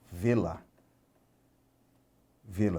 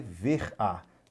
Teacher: Veja que o R vai desaparecer. Faço questão aqui de desenhar para você o R que deveria aparecer, ver a.